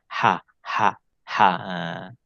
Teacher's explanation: Ha ni termasuk huruf halq disebut dengan huruf Hal halq karena makhraj nya berasal daripada halkum dan dia keluar daripada pertengahan halkum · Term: huruf halki